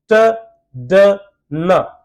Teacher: जब आप ये तीनों साउंड बोल रहे हैं, your tongue is touches टू द alveolar ridge और ऑब्स्ट्रक्शन क्रिएट हो रही है एयर में